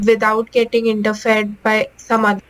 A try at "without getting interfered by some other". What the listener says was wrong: Without getting in the fed. That, I'm not quite sure what you're saying. So be careful of those one syllable words because they only have one vowel sound. So if you don't pronounce that vowel sound correctly, it can be difficult to figure out the meaning of what you're saying.